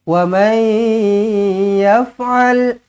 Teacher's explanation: Wa man yaf'al nun kosong bertemu dengan ya, idgham ma'al gunna, jumpa dengan huruf ya, terus senyum, dengungkan dua harakat.